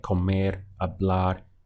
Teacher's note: you are stressing the end of the word when it comes to full verbs.